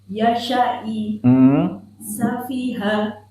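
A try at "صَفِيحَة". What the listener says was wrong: Safiha. Haknya tebal barusan. Harus tipis. Safiha.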